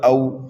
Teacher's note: یہ واو لین ہے، واو لین کو جلدی پڑھا جاتا ہے۔